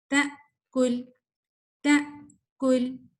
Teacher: سانس، آواز 1 سیکنڈ کے لیے بالکل بند ہو جائے گی، پھر آپ اگلے لیٹر پہ آتے ہیں · آپ نے حمزہ پڑھتے ہی آواز کو کٹ کر دینا ہے. کوئی اس میں ہمس نہیں ہے، کوئی اس میں آپ کی ساؤنڈ فلو نہیں ہے.